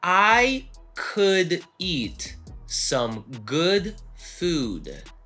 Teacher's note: Губы трубочкой делаются только на последнем слове food.